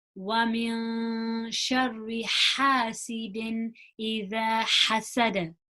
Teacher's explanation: So we've got those has again, nice and airy, as much air as you can release.